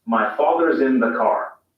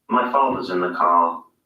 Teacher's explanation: the father ends in a simple schwa vowel like father and in car the vowel sound is lengthened in place of the r sound